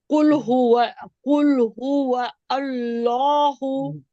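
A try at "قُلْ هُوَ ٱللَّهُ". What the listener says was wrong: कुल हुवा अल नहीं, कुल हुवल।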